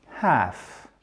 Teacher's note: Faites bien le H aspiré, half. En British English, ça sera un A long